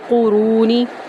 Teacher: نون کو لام میں داخل کریں گے، قاف اور را کو پر کریں گے، را کو واو میں داخل کریں گے